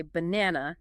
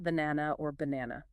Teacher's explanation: The stress is on the second syllable, na.